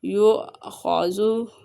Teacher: یؤخذو، حمزہ پہ جھٹکا ہوگا کیونکہ حمزہ ساکنہ ہمیشہ جھٹکے سے ادا ہوتا ہے، اور خا کو پر پڑھیں گے، خا حروف مستعلیہ میں سے ہے